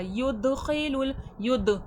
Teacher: دال میں خلخلے کی صفات واضح ہوگی، آواز پلٹ کر سنائی دے گی